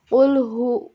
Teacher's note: itu jelas ulhu keluar dari tenggorokan bagian dalam